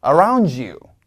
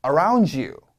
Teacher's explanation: D와 Y가 만나면 약간 지읒 소리로 바뀌어요